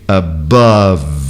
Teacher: o E final não existe, eu fecho a questão sonora no V, above. E agora o TH.